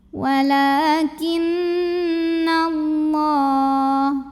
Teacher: Maka alif lam ini lewatin, tidak perlu dibaca ya. Jadi dari nun langsung diidghamkan ke lam atau idgham syamsi.